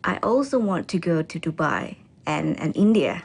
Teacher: She uses a rising intonation to express the afterthought India.